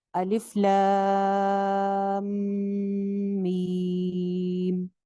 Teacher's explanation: دونوں مدیں جو ہیں وہ دو الف لمبی ہیں، لیکن اینگل آپ نے خیال رکھنا ہے.